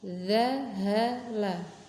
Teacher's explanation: Hati-hati mengucapkan huruf za bukan da, bukan da. Lidahnya dilonggarkan, ujung lidah kan menyentuh ujung gigi seri atas. Nah, itu dilonggarkan, jangan sampai ditekan ya, jangan ditekan, tapi longgar supaya suaranya mengalir lembut, the ya, tanpa ada halangan.